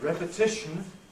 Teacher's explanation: notice the rhythmic principle forces the first syllable of repetition to be strong